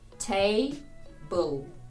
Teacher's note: має два склади table і між звуками б л немає ніякої голосної